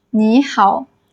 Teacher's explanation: You need to change the first third tone into second tone.